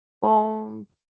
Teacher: Acá está como esdrújula porque la mayor fuerza está en la antepenúltima, pero aquí agregué dos pronombres, se y lo.